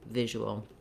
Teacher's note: visual has first syllable stress so the v or vish syllable is long and the ul syllables are shorter